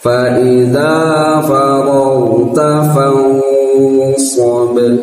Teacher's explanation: fau itu terdengar tafkhim, tebal, tafkhimul gunnah ya